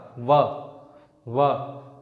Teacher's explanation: फिर उसके बाद दंतोष्ठ, दांत और ओठ का व, तो देखिए दांत और ओठ आपस में क्या हो रहा है, टच हो रहे हैं, और हवा इन दोनों से गतिरोध पा रहा है